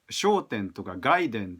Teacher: I used to pronounce shouten and gaiden as atamadaka.